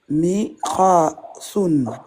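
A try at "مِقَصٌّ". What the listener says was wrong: Miqassun. Miqassun. T'appuies sur Sod.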